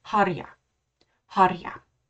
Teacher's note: This R sound rolled. Linguists would call it trilled when you're speaking Germanic. You can hear that trilled R when I say harja, harja.